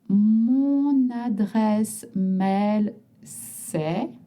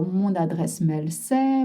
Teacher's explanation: You notice you link mon adresse email ou mon adresse mail c'est.